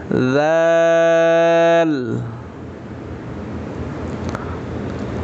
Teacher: এটা নরম করে বলবো, জিহ্বার আগা সামনের উপরে দুই দাঁতের আগার সাথে লাগিয়ে নরম করে